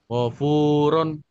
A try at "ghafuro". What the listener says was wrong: rohnya kurang, kurang, kurang sedikit panjangnya. Lagi ulang.